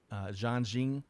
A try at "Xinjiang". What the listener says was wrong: Xinjiang. Close. Emphasis on the wrong syllable.